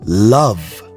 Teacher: your tongue, the tip of your tongue is touching the roof of your mouth. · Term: L sounds